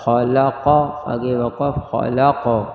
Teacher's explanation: خا زبر خا، لام زبر لا، خلق، قاف زبر قا، خلق، وقف خلق۔ آخر میں قلقلہ ہوگا